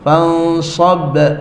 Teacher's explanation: Nun pergi ke makhraj sad. Sad dekat mana makhraj sad? Lidah tepi. So fansab. Kemudian qalqalah, ini kubra sebab dekat ujung, jadi fansab.